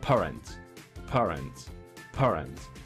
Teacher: Papá, no se mueve casi la hoja. Pero si lo digo en inglés, parents, parents, parents. Suelta mucho aire. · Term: plosivas